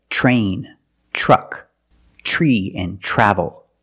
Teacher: remember when you see TR make the CH sound plus the r it will help you pronounce the r correctly so you don't · When you have TR together in any situation, you can pronounce it tr, but usually we don't. We pronounce it ch, ch plus the R sound, chr.